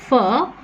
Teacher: Here we have the soft palate that is raised, and hence the air doesn't go into the nasal cavity. So we have a narrow gap between the upper front teeth and the lower lip